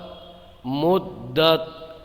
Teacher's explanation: تا کے اندر آواز پلٹ کے نہیں آئے، یعنی اس میں قلقلہ نہیں ہونا چاہیے